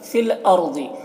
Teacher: فی الارض را ساکنہ سے پہلے زبر ہے، را کو پر پڑھیں گے، ضاد کو بھی پر پڑھیں گے، یہ حروف مستعلیہ میں سے ہے